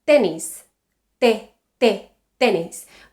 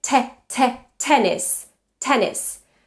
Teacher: When I say t, the tip of my tongue is not touching the teeth. No contact with the teeth, right?